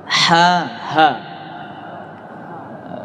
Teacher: ha tenggorokan bagian bawah sama dengan hamzah